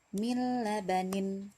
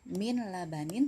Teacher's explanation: Nah, jadi langsung dimasukkan ke huruf lam.